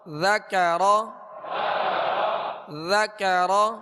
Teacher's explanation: ذال کو باریک پڑھیں گے اور نرمی کے ساتھ پڑھیں گے